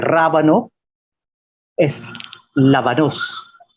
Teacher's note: La R en español se convierte en L en filipino. Así que rábano es lábanos.